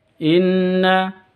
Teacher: non tasdidnya berdiri sendiri gunyad dengung dua ketuk